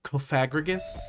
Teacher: some people love to put emphasis on that second syllable and make it Coffagrigus.